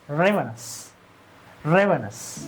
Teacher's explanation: We have to stress the first syllable.